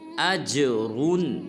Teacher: جب حمزہ کو جیم ساکن کے ساتھ ملائیں گے تو جیم کو قلقلہ کریں گے، یعنی کہ ہلائیں گے